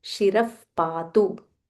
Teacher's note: So here, using the Visarga rule, there is a Visarga Raha followed by Pa. So when we are pronouncing it, we say Shiraf Patu.